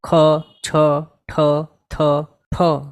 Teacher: આ બોલતા ટાઈમે કંઈક વધારે પ્રયત્ન કરવા જરૂરી છે એવી છે મોઢામાંથી હવા કાઢીને બોલાય એવી છે